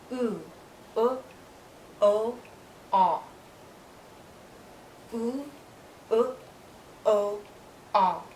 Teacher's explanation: When I move to these vowels, the back part of my tongue is higher.